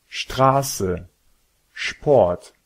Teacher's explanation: S'il se trouve au début d'une syllabe, le S se prononce comme un ch.